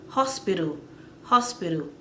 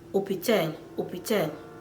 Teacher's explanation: They skip the H, they will just go to the O